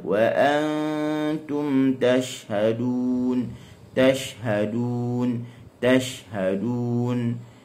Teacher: Huruf shin dia keluar daripada wastul lisan ma'a ma yuhadhi min hanakil a'la, bertepatan dengan langit atas. Kita kena ingat dia bersifat dengan rakhawah.